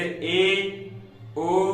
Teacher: अर्ध संवृत स्वर वे स्वर जिनके उच्चारण में मुख संवृत स्वर की अपेक्षा अधिक खुलता है